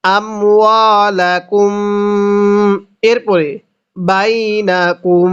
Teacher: মিম সাকিনের পরে যদি বা থাকে তাহলে মিমটাকে গুন্নাহ করে পড়তে হবে